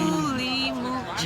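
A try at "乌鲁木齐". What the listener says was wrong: It's a W at the beginning. They all put W at the beginning. Wulumuchi. It has a W at the beginning, a woo sound at the beginning. Wulamuchi.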